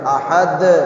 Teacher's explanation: یہ احد دال کے اوپر جا کے آواز ٹکرا کے واپس آتی ہے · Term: قلقلہ